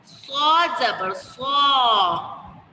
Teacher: صاد موٹا حرف بھی ہے اور اس میں سیٹی بھی ادا ہوتی ہے